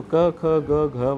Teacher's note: क ख ग घ वाली कंठीय ध्वनि होती है